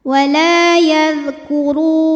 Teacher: huruf ra dibunyikan secara tafkhim karena ra-nya berbaris dhammah. Cara bacanya tebal, pangkal lidah dinaikkan. Wala yadhkuru, ru mad tabi'i zahiri karena ada waw sukun didahului dhammah, maka huruf ra panjang 2 harokat.